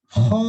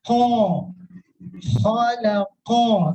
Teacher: Huruf isti'la itu huruf yang dibaca dengan cara mengangkat sebagian besar lidah ke bagian atas langit-langit mulut